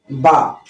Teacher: دوسرا مخرج ہے با کا، دونوں ہونٹوں کی بھیگی تری